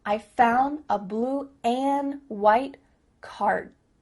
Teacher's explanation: a blue and white here the forward and is being reduced just cut off that final D sound